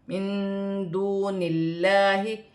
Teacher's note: اللہ کی لام سے پہلے زیر ہے تو یہ اللہ کی لام باریک پڑھی جائے گی، اور لام پر کھڑی زبر ہے، ایک الف کی مقدار کھینچ کر پڑھا جائے گا، الف پر کھڑی زبر ہے، اسے حمزہ پڑھا جائے گا اور ایک الف کی مقدار کھینچ کر پڑھا جائے گا۔ · نون ساکن میں اخفا ہوگا کیونکہ نون ساکن کے بعد حرف اخفا میں سے دال آ رہی ہے